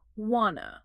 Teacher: They are learning how the word want and the word to violently smash together in natural speech to sound like wanna.